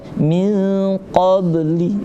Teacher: Nah, seperti qab, ada qab tapi kecil, pantulnya enggak terlalu besar. Maka istilahnya disebut dengan qalqalah sughra.